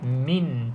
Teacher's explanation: Jelaslah bunyi nun, jelaslah bunyi mim. Rapat bibir atas, bibir bawah. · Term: izhar